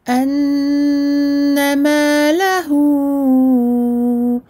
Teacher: Le plus important, c'est que ce med est suivi d'une hamza. Et c'est la hamza qui provoque la prolongation de 4-5 temps.